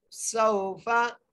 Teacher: सिन को वाव से मिलाना है, सीटी के साथ पढ़ना है